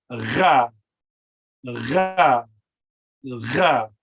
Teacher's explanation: Ra is always hard, but you try to gargle, you make a gargling sound as you say it.